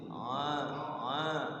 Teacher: tengah-tengah tenggorokan sama ha satu tempat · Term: huruf ain